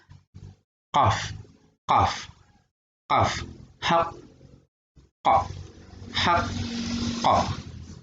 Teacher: keluar huruf ini berasal dari pangkal lidah yang berdekatan dengan tenggorokan dan ditekankan pada langit-langit mulut bagian belakang. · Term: huruf qaf